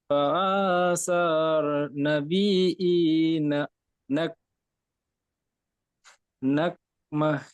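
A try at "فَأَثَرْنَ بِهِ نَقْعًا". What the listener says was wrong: ফাআসার বলে ফা কে টান দিলেন কেন? এগুলো সব হারাকাতে আসে না, জলদি পড়তে হবে। ফাআসার, নাবি টান দিচ্ছেন কেন? বাজের বি হারাকাত। নাবিহি, নাবিহি।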